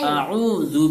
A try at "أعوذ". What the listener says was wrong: اعو اعو، آ نہیں، بولیے او۔ پہلے سادھارن بول دیں گے، سمپلی آرام سے اس کے بعد نکالنا ہے او، اعو